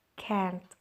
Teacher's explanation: Native speaker usually drop the T. Jadi bacanya itu can't.